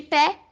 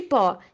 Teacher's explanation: a vogal média baixa, que são E de pé e O de pó